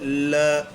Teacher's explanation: ल का उच्चारण करते हैं तब बोल के देखिए, ल ऐसा लगता है जैसे वायु जीभ के साइड से होकर के गुजर गई हो। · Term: पार्श्विक व्यंजन